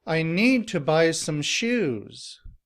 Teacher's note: Here the stress is on need, buy, and shoes.